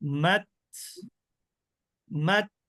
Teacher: আমি কিন্তু মাত বলে আটকে দিয়েছি দিয়ে তারপর বাতাসটা বের করে দিলাম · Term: হামস